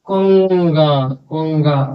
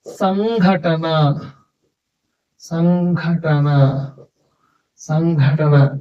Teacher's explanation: పదం మధ్యలో సున్నా ఉన్నప్పుడు ఆ సున్నా తర్వాత క వర్గం ఉంటే క ఖ గ ఘ లు ఉంటే ఆ సున్నా ని న్య అని చదవాలి న్య లో సగం చదవాలి న్య అని చదవాలి ఇన్ అని చదవాలి ఇక